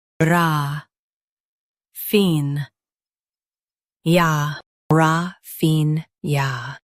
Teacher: Emphasize fin and keep ya soft.